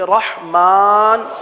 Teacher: الرحمن، یہاں پر را آ گیا، اس را کو پر پڑھیں گے، ہا کو واضح کریں گے